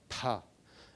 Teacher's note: So aspiration is actually a phonetic feature in which when you have a stop consonant like P, say, you do not produce the vowel sound immediately, but between the consonant and the vowel sound, you have a puff of air going out